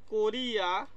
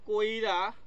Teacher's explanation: হ্রস্বইটা কিন্তু রয়ের পরে ছিল, তা কিন্তু কিনা এখানে আগে চলে আসছে। তাহলে এই যে হ্রস্বইটা কিন্তু কিনা আগে চলে আসছে রয়ের, এটাকে বলা হচ্ছে না অপিনিহিতি।